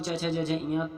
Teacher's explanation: च वर्ग में च छ ज झ इयाँ जिन्हें तालव्य ध्वनियाँ भी कहते हैं